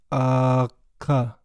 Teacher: I'm using kind of the back of my tongue to touch the roof of my mouth to make that sound